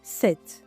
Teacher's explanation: In 17, you don't really hear the X sound. It sounds like 17, almost as if we dropped the X sound. Actually, we did it.